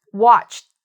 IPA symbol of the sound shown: t